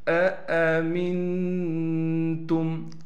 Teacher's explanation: پھر میم کو نون سے ملائیں گے غنے کے ساتھ، تا کو میم سے ملائیں گے بغیر غنے کے، پھر میم کو آگے میم سے ملائیں گے غنے کے ساتھ کیونکہ میم پر تشدید ہے۔